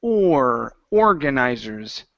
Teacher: slide from the O into the R.